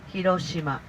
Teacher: we say Hiroshima very flat